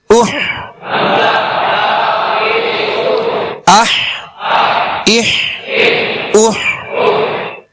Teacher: ہا کو وسط حلق سے ادا کرنا ہے، یعنی ہا اور ہا میں فرق کرنا ہے.